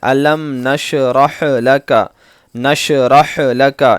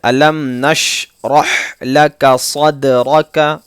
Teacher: یہاں پر شین پر اور حا پر قلقلہ نہیں ہونا ہے